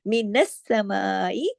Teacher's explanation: سین کے اوپر تشدید ہے، سختی سے جوڑ کے پڑھا جائے گا، میم کے اوپر مد ہے، کھینچا جائے گا۔